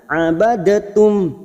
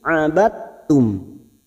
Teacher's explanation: Ma'abad, di sini ada huruf dal sukun yang bertemu dengan huruf ta. Sifat dari huruf dal sukun ini hilang, langsung masuk pada huruf ta, dan ini disebut dengan hukum bacaan idgham mutajanisain, yaitu memasukkan 2 huruf yang sejenis makhrajnya.